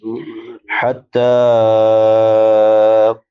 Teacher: چھوٹی ہا ہے وسط حلق سے ادا ہوتی ہے